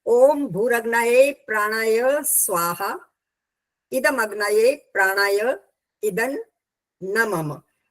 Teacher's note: जब इदं न मम कहना है उससे पहले थोड़ा रुकना होता है।